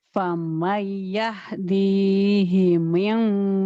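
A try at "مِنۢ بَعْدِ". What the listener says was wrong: Jangan jangan diming, bukan ikhfa kan mim, tetap bunyi m Mim mim mim mim mim mim.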